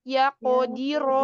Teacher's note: Ya qodiro, diro, di tipis, ro tebal.